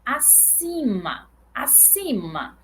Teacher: Então, esse I aqui, ele é nasal também. Então, eu tenho aqui um I, que ele é tônico e é nasal